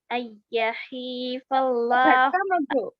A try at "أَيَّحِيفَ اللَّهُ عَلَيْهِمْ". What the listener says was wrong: جھٹکا مت دو بیٹا اللہ کئی کو الگ کر رہے آپ یحیف اللہ کیوں نہیں بول رہے یحیف اللہ ملا کے پڑھیے